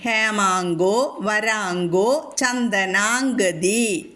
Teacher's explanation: ശ്രദ്ധിക്കണം അത് ചൊല്ലുമ്പോൾ കേട്ടോ ഹേമാങ്കോ അവിടെയും ങ്ങ വരും അനുസ്വാര നിയമം ഹേമാങ്കോ അനുസ്വാരത്തിന് ശേഷം കവർഗ്ഗത്തിലെ ഗ എന്ന അക്ഷരം വന്നതുകൊണ്ട് കവർഗ്ഗം വന്നാൽ അവിടെ ങ്ങ ചൊല്ലണം